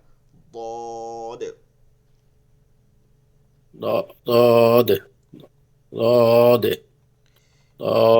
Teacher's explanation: ضاد মাখরাজ জিহ্বার গোড়ার ضاد কিনারা, জিহ্বার গোড়ার কিনারা উপরের মাড়ি দাঁতের গোড়ার সঙ্গে লাগে